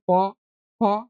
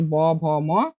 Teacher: প বর্গের হচ্ছে অঘোষ বর্ণ হচ্ছে প, ফ। আর ঘোষ বর্ণ হচ্ছে ব, ভ, ম। আর হচ্ছে অল্প প্রাণ বর্ণ হচ্ছে প আর হচ্ছে ব, মহাপ্রাণ বর্ণ হচ্ছে ফ আর হচ্ছে ভ।